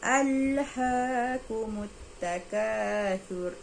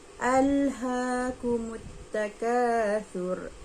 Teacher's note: ra ni dia kena baca tebal